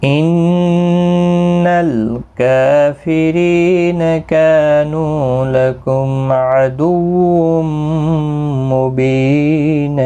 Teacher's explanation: نون مشدد پر غنہ ہوگا، لام ساکن کو ہلانا نہیں، کاف کو ایک الف کی مقدار کے برابر کھینچ کر پڑھیں گے، ری یا مدہ ہے، کا الف مدہ ہے، نو واو مدہ ہے، تینوں کو ایک ایک الف کی مقدار کے برابر کھینچ کر پڑھیں گے۔